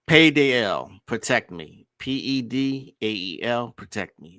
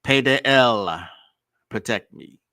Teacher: Pronounce his name P-E-D-A-E-L with the emphasis on the final syllable